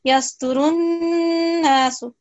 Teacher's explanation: Try to keep this nun. Mushaddad nasal sound for 2 seconds.